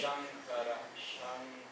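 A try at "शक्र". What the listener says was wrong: Where is Shang? Shang under where is the nasal? Read letter by letter. First letter, then followed by the second one, the consonant, then followed by... Where is go? There is no go at all. Ka is okay. What is that below the ka?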